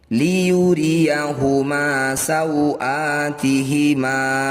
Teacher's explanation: Fathah diikuti alif disebut mad tabi'i atau mad asli. Panjangnya 2 harokat meski ada di akhir bacaan tetap 2 harokat saja.